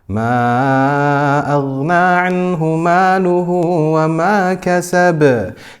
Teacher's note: it's qalqala wusta because it is at the end of the word, but it does not have a shadda